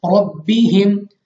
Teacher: रा पर जबर, रा को पूर पढ़ेंगे यानी मुंह और आवाज को खोलकर